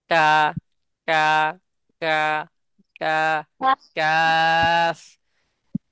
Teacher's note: কাফ উচ্চারণ হয়। নরম ও শক্ত তালুর সাথে লাগাইয়া কাফ উচ্চারণ হয়।